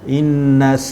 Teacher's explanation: inna tu adalah wajibul gunnah, wajib dengung ke 2 harakat